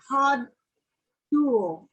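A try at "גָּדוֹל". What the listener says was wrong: Gadol. It's a gimel. Gadol.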